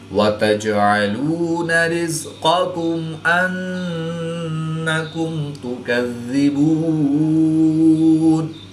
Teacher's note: جیم حروف قلقلہ میں سے ہے اور یہ ساکن ہے تو یہاں پر ہم قلقلہ صغریٰ کر کے پڑھیں گے۔ نون مشدد میں ہمیشہ غنہ ہوتا ہے تو یہاں پر ہم غنہ آنی کر کے پڑھیں گے